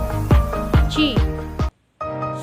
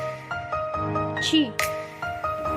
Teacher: Chi, like the chi in English, chip, but with a stronger pop of beat and with the middle part of the tongue pressed tightly against the roof of the mouth. There is greater amount of friction in Mandarin than in English, and while the lips are always rounded in English, they are founded in Mandarin only in front of you, being spread before the other vowels.